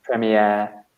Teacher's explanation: Yeah, I guess it comes from the French. So we stress the last syllable, like an air, premiere.